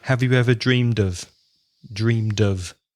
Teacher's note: not off but of that schwa again